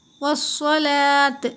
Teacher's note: इस अलिफ़ को नहीं पढ़िए, वाव को मिलाना है सौद में